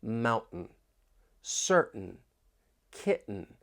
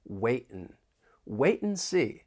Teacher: And in spoken English is often reduced to just N. And with the American accent, when you have the T followed by an N, that T may get changed to a glottal T.